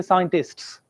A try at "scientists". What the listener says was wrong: Scientists, nahi, scientists. Yeah, well done. Scientists, S in the end.